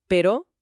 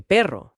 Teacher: Un toque o varios toques, y cambia la palabra